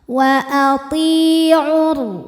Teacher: Sukun bertemu sukun tidak bisa dibaca sehingga sukun pertama dilepaskan. Jadi ainnya pendek kalau wasal, langsung tempel ke ro. Wa ati'ur. Kemudian alif lamnya dinamakan dengan alif lam syamsiyah sebab alif lam menghadapi huruf syamsiyah yaitu ro. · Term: takhallus bil hadfi